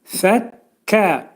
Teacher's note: Kəf hərfinin məxrəci isə dilin sonu və dilçəyin axır hissəsindədir